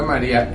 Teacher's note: es una vocal cerrada, tiene un mayor golpe de voz, una sonoridad, está la sílaba tónica, y eso hace que sea independiente de la A, y por eso se puede decir que ahí hay un hiato.